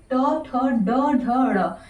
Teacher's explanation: मूर्धन्य से आप क्या करेंगे, ट ठ ड ढ ड़, ये ट वर्ग का हो गया हमारा। जो भी आते हैं ये ट वर्ग में आते हैं, मूर्धन्य से हम बोलते हैं